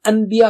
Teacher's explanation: ان کہنے کے بعد جیسے ہی آپ با نکالنے کے لیے ہونٹ ملائیں گے تو خود بخود ہی میم کی آواز آئے گی۔ دیکھیے ان میم ہو گیا نا، تو آسانی سے ادا کرنے کے لیے اس کو ویسے ہی میم سے بدل دیا گیا تاکہ مشکل ہی نہ ہو۔ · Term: اقلاب